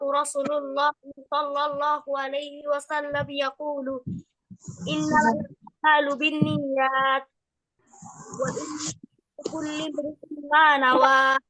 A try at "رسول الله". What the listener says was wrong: এখানে একটু খেয়াল করব, রসুল্লাহ, আমরা সবসময় রসুল্লাহ বলি, তো এখানে রসুল্লাহ না, শব্দটা রসুল আল্লাহ নামের উপর জবর দিয়ে রসুল আল্লাহি, এই জিনিসটা একটু খেয়াল করে বলবো, ঠিক আছে?